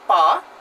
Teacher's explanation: want to say let's say the word PA what I do I close my lips for a moment and then release it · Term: labial